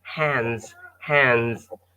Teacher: so you feel like the D is not there